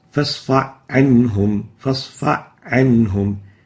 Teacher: No ha, directly the fa to the ain. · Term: idgham